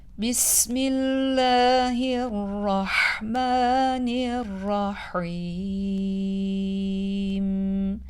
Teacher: Rahman kelimesinde bulunan Mim harfinin fetha sesini ince bir a sesiyle okumamız gerekir bu kelimeler üzerinde bulunan Mukadder Elif sebebiyle Mehmet yaparak yani uzatarak